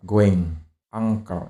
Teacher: Jadi bukan n ya. Note that the n sound in these words is not made at the alveolar ridge, which is why it is distinct from n ya. Ini lebih ke eng ya. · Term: velar